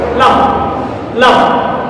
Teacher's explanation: জিহ্বার অপর পাশ ও তার সামনের উপরে দাঁতের গোড়ার তালুর সাথে মিল করে উচ্চারণ করতে হয় লাম। দেখো উচ্চারণ লাম লাম।